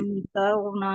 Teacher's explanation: रा मोटा पढ़ा जाएगा इसमें से, क्योंकि जो है इससे पहले वर्ड पर नहीं, आप मद्दा नहीं पढ़ेंगे, रापुर पढ़ेंगे, इससे पहले हाँ, जबर यानी पुर या मोटा, पुर मोटा से करके मतलब भी मुराद यही होती है, मोटा पढ़ना।